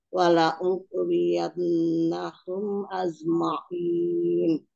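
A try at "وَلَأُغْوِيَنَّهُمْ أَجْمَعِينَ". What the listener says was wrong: Bukan az tapi aj ya, jahar.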